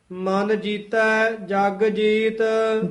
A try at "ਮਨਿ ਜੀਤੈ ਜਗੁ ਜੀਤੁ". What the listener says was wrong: ਜੀਤੈ ਪਦ ਕਸ ਕੇ ਬੋਲਣਾ ਹੈ। ਮਨ ਜੀਤੈ, ਜਗਜੀਤ ਨਹੀਂ ਕਹਿਣਾ ਹੈ। ਜਗ ਜੀਤ ਵੱਖਰਾ ਵੱਖਰਾ ਬੋਲਣਾ ਹੈ।